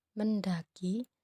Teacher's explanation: Puncak kenyaringan itu adalah E pada men, A pada da, dan I pada ki.